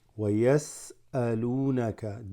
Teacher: The waw here extends the lam.